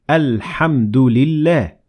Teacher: notice how we pronounce the hamzat wassel at the beginning of the word al-hamdu because we started there and we said al-hamdu lillah but we ignored the following hamzet